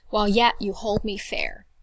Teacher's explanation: I hear emphasis or stress on that word hold I hear stress on that word and fair I hear stress · Hold, I hear stress on that word. And fair, I hear stress on that word. That means that while, you and me would be unstressed.